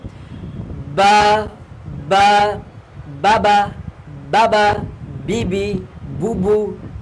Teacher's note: দুই ঠোঁট হইতে বীজা অংশ মিলে, দুই ঠোঁটের বীজা অংশ মিলে উচ্চারিত হয়